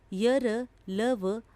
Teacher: जिन वर्णों के उच्चारण में श्वास का अवरोध बहुत कम होता है वे अंतस्थ व्यंजन कहलाते हैं य र ल व अंतस्थ व्यंजन है ऊष्म व्यंजन जिन वर्णों